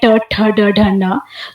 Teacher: तो जीभ ऊपर उठती है और सामने के छत के से संपर्क बनाती है, थोड़ी आगे की तरफ आ जाती है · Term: टवर्ग